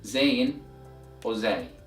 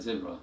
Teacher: So the sound of this letter is equivalent to the letter Z in English as in the word zebra, and the sound of this letter is kinda similar to the buzzing sound of a housefly. So letter Zayn or Zay is an alveolar letter. So to pronounce it, the tip of the tongue should be moving downwards right behind the alveolar ridge, the hard area right behind your lower teeth, while the back end of the tongue is not raised or elevated.